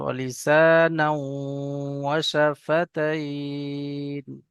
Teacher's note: এখানে তানবিনের পরে ওয়াও এসছে, ইদগামে ইয়ার মালুনের কায়দার মধ্যে থেকে ইয়া ওয়াও মিম নুন চারটি অক্ষরের গুণনা হয়। তো এখানে তানবিনের পরে ওয়াও এসছে, এখানে ইদগাম করে এক আলিফ পরিমাণ গুণনা করে পড়তে হবে। আর আরেকটা হলো এখানে মধ্যে আরজি ওয়াকফি, এটা একটু টান দিয়ে পড়তে হবে, ওয়ালিসানাউ ওয়া শাফাতাইন।